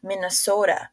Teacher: Minnesota is pronounced as Minnesota with stress on the second and fourth syllables